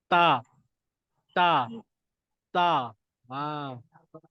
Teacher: Hujung lidah ke antara gusi dan gigi atas. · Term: makhraj huruf ta